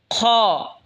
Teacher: খ হলকের শেষ ভাগ হয়তো উচ্চারণ হবে খ।